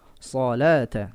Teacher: punggung lidah angkat ke langit-langit supaya dia memiliki sifat isti'ala. Ya, bukan ya, tapi menggunakan lidah.